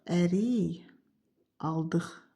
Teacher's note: Axırdakı q X kimi tələffüz olunacaq. Ona görə kar samit olacaq deyə olmayacaq.